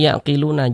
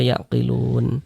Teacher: Huruf nun kan tidak dibaca panjang. Karena berwakaf di huruf yang tidak dibaca panjang, ya hurufnya kita sukunkan seperti itu.